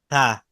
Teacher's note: টা উচ্চারণ হয় জিহোবার আগাটা উপরের দাঁতের আগার সাথে এভাবে থা জিহ্বার আগাটা উপরে যে দাঁতটা আছে দাঁতের আগার সাথে